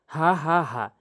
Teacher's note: এটি হলকের শুরু থেকে উচ্চারণ হয়